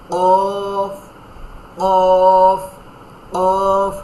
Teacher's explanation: কুল, এখানে এক ছোট করে একটা পেন্সিলে দাগ দেন যে কুল, কফ, এই যে এখান থেকে জিহ্বার গোড়া, তারপর ওর উপরে তালুর সঙ্গে লাগাইয়া কফ